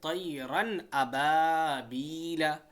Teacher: غنہ نہیں کر رہے ہیں یہاں پہ ہم بالکل کلیئرٹی سے پڑھ رہے ہیں